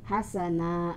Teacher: Hasana, karena letaknya di akhir kalimat atau di akhir ayat, hasana, maka disebut mad iwad. Fat-hatain dibaca panjang karena diletakkan di akhir kalimat atau sebagai tanda berhenti